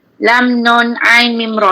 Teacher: Dia pertengahan ni tawasud. Dia tak terlalu melirit atau tak terlalu tertahan.